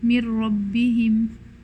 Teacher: the noon completely goes away and turns into a ra. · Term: idgham kamil